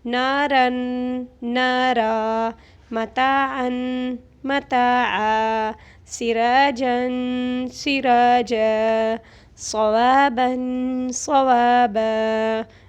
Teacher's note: اب ایک زبر ہٹا کے اس کے اوپر 1 زبر رہ جاتا ہے تو وقف کے دوران ہم 1 زبر کو ہٹا کر 1 زبر کے ساتھ اس الف کو پڑھیں گے، کیونکہ یہ خالی الف ہے اور خالی الف سے پہلے زبر آ جائے تو اس کو الف مدہ کہلاتا ہے، اور 1 الف کے برابر اس کو کھینچنا ہوگا۔